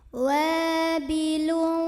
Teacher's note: tanwin dhammah ini dibunyikan samar-samar sambil dengung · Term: ikhfa